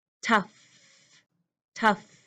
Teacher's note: my lips are tight I have the sound with a top teeth touching the bottom lip